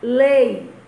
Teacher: O E você escuta com mais intensidade. Então, ele é a vogal. O I é só um apoiozinho para a vogal. Então, ela é a semivogal. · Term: vogal e semivogal